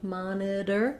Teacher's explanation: Then our letter T says a flap sound